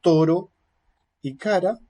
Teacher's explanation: la punta de la lengua golpea rápidamente sólo una vez en los alveolos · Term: vibrante simple